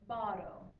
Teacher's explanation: our flipped R is basically just like our rolled R except instead of multiple Rollings of the r it's just one